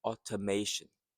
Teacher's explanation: the stress is in the third syllable the third sound automation.